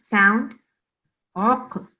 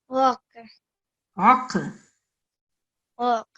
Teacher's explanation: qaf also is a qalqala, so you have to make a jerking sound